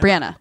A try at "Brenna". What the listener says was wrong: Brenna. There's no A.